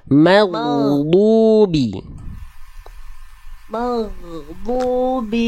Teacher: Jadi ma-nya tipis, ghoy-nya tebal.